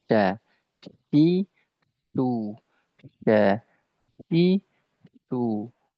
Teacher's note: Jangan sampai tafasyi ini dia berubah menjadi sin